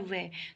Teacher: य व के उच्चारण में हवा बिना संघर्ष के निकलती है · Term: अर्ध स्वर